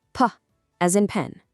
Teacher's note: Ah as in orange. P is entirely unvoiced. Just a tiny quiet pop of air